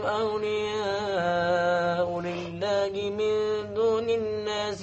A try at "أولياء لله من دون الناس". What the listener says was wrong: Batal. Sebab apa? Tak cukup? Dengung tak cukup. Langgar je. Awliya ulillahi min dunin nasi. Cik, sedap dia langgar ya. Nak cepat habiskan hinggakan lupa kepada yang wajib iaitu wajib al-ghunah, semua tu mesti.